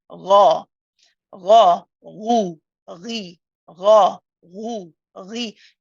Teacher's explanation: When you say the ru, still you got the circling of the lips.